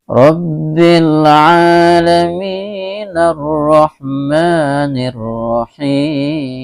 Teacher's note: Jadi Rabbil alamin, mi cuman dibaca 2 harokat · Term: mad tabi'i